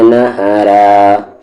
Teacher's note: را یہاں پر ہیوی ہوگا نہرا کیونکہ اس کی آواز اوپر کی طرف جا رہی ہے